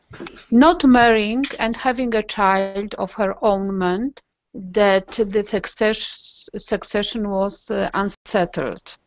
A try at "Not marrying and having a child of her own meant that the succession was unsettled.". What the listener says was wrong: can I just say that when you read that, let's look at the intonation of your reading there. you're reading it first time through, but not marrying and having a child of her own, you should keep the of her own together, meant,